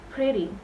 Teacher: Kita ngomongnya ugly itu yang di stress juga the first syllables atau suku kata yang pertama